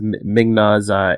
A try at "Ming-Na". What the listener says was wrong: No, I usually pronounce the I in that. Yes, Ming-Na, yes. Or, yeah, I don't, yeah, there's an I in there. I'm sure there's an I in there, okay? I pronounce it, I'm sorry. You know, yeah, Ming-Na Wen, yes, okay.